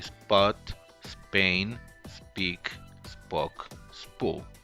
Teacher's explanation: English also have a voiceless bilabial stop unaspirated, which is the same as the Spanish allophone